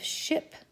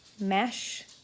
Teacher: The next two sounds are made on the roof of the mouth. There is sh, which is a voiceless fricative, as in the beginning of ship and the end of mash.